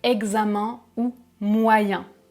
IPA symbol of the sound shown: ɛ̃